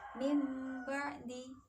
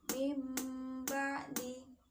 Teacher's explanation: dengan mengubah suara nun mati atau tanwin menjadi suara huruf mim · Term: iqlab